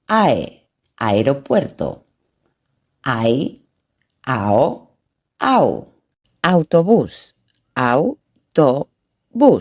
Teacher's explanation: when blending the sound of two vowels, each vowel maintains their own sound